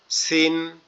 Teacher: সিন মানে এটা হালকা আওয়াজ হবে, আমাদের জিহ্বার আগা নিচের দুই দাঁতের আগার সঙ্গে হালকা লেগে আওয়াজ হবে